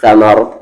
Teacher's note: رکنے کی جگہ پر رکیں آپ ثمر اور را ہیوی ہوگا